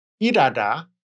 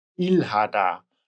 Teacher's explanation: So the Batchim R is pronounced as L, malhada, but we pronounce H very weakly, almost like irada instead of ilhada.